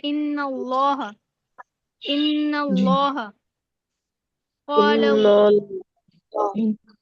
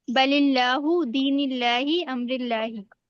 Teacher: लफ्ज अल्लाह की लाम को जब हम पुर पढ़ते हैं तो हमारी जबान जो है वो बुलंद हो जाती है।